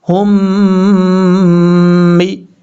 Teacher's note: اب ہا کو دوسری میم کے ساتھ ملائیں گے جس میم کے اوپر شد ہے، اور بیچ میں جو میم ہے اس کو چھوڑ دیں گے، ہا میم پیش، ہم میم زیر می، ہم می، یہاں پہ ادغام مثلین ہو رہا ہے، ایک الف کی مقدار غنہ بھی کیا جائے گا